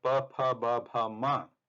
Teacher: This line has the Ucharana sthanam as oshtha, or they are the labial letters.